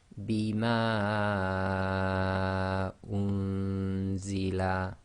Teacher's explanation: Okay, so the ma is 4 long.